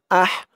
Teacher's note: আহ হামজা দিয়ে হা ধরবে, আহ হার আওয়াজটা চিকন করতে হবে।